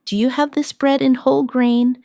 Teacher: In connected speech, do you becomes dia?